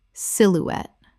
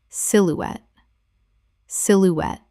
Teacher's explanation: Three syllables with the stress on the final syllable. The e at the end is pronounced.